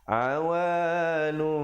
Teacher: Sekarang kita jumpa iqlab pula. Nun mati bertemu ba. Jangan lupa nun tukarkan kepada mim, daripada awanun jadi awanum dengan kadar panjang 2 harakat dan mim yang nipis.